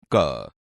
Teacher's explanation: ક વ્યંજન કંઠમાંથી નીકળે છે અને ઓછા પ્રાણવાયુની જરૂર પડે છે, તેથી ક એ અલ્પપ્રાણ છે.